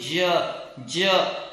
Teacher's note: एक तो ज आपने किससे बोला था, जीभ को उठाया था, ज जो बोला था वो front part of the tongue raise हो रहा था, tip of the tongue lower थी